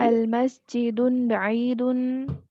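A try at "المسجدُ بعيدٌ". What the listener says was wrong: المسجد نہیں, یہ غلط لکھا ہوا ہے یہاں پہ, آپ غلط ہی پڑھیں گے. الف لام آ جائے تو پھر تنوین نہیں آتی, کیا ہوگا یہاں پہ, المسجد دو ہوگا.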